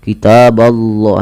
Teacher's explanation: lafal Allah tebal tapi huruf bnya tidak boleh ditebalkan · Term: bnya tipis